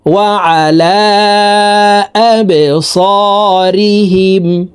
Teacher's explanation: বা কলকলার হরফ নিচের দিকে ধাবিত করে ধাক্কা দিয়ে উচ্চারণ করব।